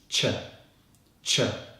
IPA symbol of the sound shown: tʃ